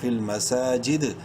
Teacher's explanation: اور وقفاً اس دال میں جو کہ ساکن ہونے والا ہے قلقلہ کریں گے ، فل مساجد، تا لام زیر تل، کاف زبر کا، تل